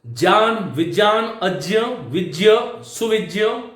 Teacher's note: ज्ञान, विज्ञान, अज्ञ, विज्ञ, सुविज्ञ, ये जितने भी शब्द हैं उनको मैं ज के रूप में बोलता हूं